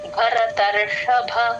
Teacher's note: భరతర్షభ లో ఫస్ట్ భ లాస్ట్ భ రెండిటికీ మహాప్రాణాలు ఉన్నాయి